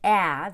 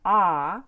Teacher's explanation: with my mouth wide open the difference between a and ah when I say add the short eh the tip of my tongue will be up but when I say the ah the short o the tip will be down